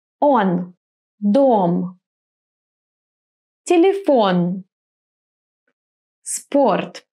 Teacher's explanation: So when the O is stressed, it will be clear O. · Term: stressed O